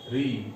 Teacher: री अपने 18 भेदों सहित कहां से उच्चरित होता है? मूर्धा से, और यह मूर्धन्य वर्ण है